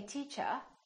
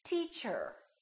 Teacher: in British English people generally don't pronounce the final R the r at the end of the word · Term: British R